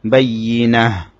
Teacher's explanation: এখানে বাইয়ি ইয়ার মধ্যে তাসদীদ হলে ইয়া একটু শক্ত হবে। বাইয়িনাহ, তার মধ্যে গোলতার মধ্যে ওয়াকফ করা হয়েছে, সে কারণে গোলতাটা হা হয়ে যাবে। · বাইয়িনাহ, তার মধ্যে গোলতার মধ্যে ওয়াকফ করা হয়েছে, সে কারণে গোলতাটা হা হয়ে যাবে। যেখানেই এভাবে গোলতার মধ্যে ওয়াকফ করা হবে সেখানে গোলতাটা হা হয়ে যাবে। যদিও বা এখানে দুই জবর থাকলেও তখনও এখানে একটা আলিফ লেখা হবে না, সে তাটা হা হয়ে যাবে।